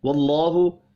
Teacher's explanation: اللہ کا نام پر پڑھا جائے گا زبر کی وجہ سے